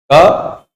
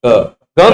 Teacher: क बोलेंगे और ग बोलेंगे, क ग में गले में गूंज है, क में गले में गूंज नहीं। तो क अघोष में आएगा और ग घोष में आएगा